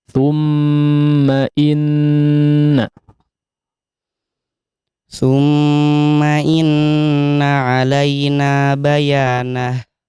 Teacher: Mim sama nun yang bertasydid sama gunnah, panjang gunnah.